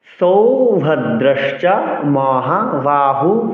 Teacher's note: সৌভাদ্রাসচা মহাু বিসর্গের জন্য হ আসলো আমি হুহু দুবার উচ্চারণ করলাম বিসর্গের জন্য হ আসল এবং সেই উকারের উচ্চারণ আবার হর সাথেও যুক্ত হল